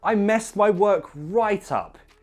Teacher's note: Notice I put the stress on the word right.